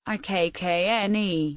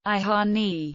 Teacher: The singular and plural masculine definite articles can both be realized phonetically as I in Florentine varieties of Tuscan, but are distinguished by their phonological effect on following consonants. The singular provokes lengthening of the following consonant, ikkne, the dog, whereas the plural permits consonant weakening